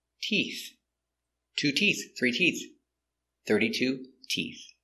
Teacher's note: more than one two three four five e t so remember we start with a t sound with our tongue inside and we finish with the th with the tongue touching the teeth making the air